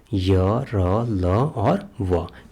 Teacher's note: अंतस्थ व्यंजन उन व्यंजनों को कहते हैं जिनके उच्चारण में जीभ बहुत कम रगड़ खाती है, यानी कि उनमें अवरोध बहुत कम होता है, उसको अंतस्थ व्यंजन कहते हैं।